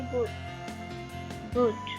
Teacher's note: ड is not released ऑडिबली when it occurs finally and when it is immediate followed by another plosive or affricate।